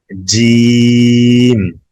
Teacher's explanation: जीम अदा होता है जुबान का बीच ऊपर का तालु, زبان کا بیچ اوپر کا تالو, اس کو اوپر اٹھائیں گے زبان کو